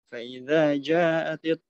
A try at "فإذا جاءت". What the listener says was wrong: Ja'at itu mad wajib. Dia lebih panjang 2 harokat. Mesti nggak boleh 2 harokat, nggak boleh. Mesti lebih panjang lagi. 4 harokat lah yang